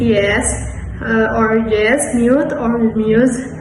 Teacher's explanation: It is produced with the tongue raised high and toward the front of the mouth, then the tongue immediately glides away from the position of the following sounds. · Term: semi-vowel J